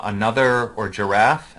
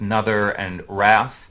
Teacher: Another phonological process is unstressed syllable deletion, like a child deleting the initial unstressed syllable from another or giraffe and coming up with nother and wrath. And indeed, those initial unstressed syllables are far more vulnerable to being deleted than final unstressed syllables.